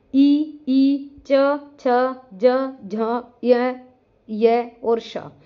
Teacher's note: तालव्य वर्ण जिसका हमारा उच्चारण स्थान तालू होता है